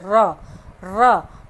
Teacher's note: जिसके उच्चारण में जीव तालु से लुढ़क का स्पर्श करे, वो हमारा लुंठित वर्ण होते हैं। लुंठित वर्ण कौन सा, र, जिसे र को बोले र मतलब जीव और तालु से लुढ़क का स्पर्श करे, तो वो क्या है, लुंठित वर्ण हो गया र आपका।